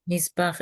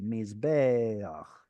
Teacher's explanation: Okay, so if this were by itself or if it were an absolute, it would be mizbeach. And that tzere has dropped down to a short vowel, albeit a patach, because it's in construct